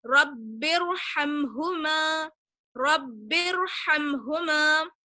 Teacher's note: جب ہم ان دونوں ورڈ کو ملائیں گے، را ساکن ہے، را ساکن سے پہلے حالانکہ زیر ہے، لیکن جب ہم ان دونوں ورڈز کو ملائیں گے تب را ساکن کو موٹا پڑھیں گے. رب ارحمہما رب ارحمہما، یعنی را ساکن ہو اور جو ہے وہ را ساکن دوسرے کلمے میں ہو تو پہلے والے کلمے کو ملاتے وقت را ساکن کو موٹا پڑھیں گے.